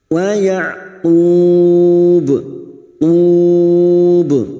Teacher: Wa ya'qub, qub bertemunya mat dengan huruf hidup yang dibaca waqaf mat arid li sukun 4 harakat kita panjangkan dan ujungnya kita pantulkan. Maka ini yang disebut dengan qalqalah kubra karena terdapat huruf ba di akhir kalimat yang dibaca waqaf.